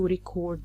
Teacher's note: when we stress the second syllable CORD, it's the verb